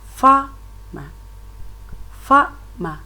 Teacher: You can see that the force is on the first syllable